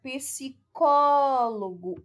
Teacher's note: O có é a sílaba tônica, a terceira sílaba de trás para frente. Ou seja, é uma palavra proparoxítona, ok?